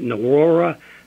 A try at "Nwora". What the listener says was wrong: Well, the N is silent, just for reference. It's Wara.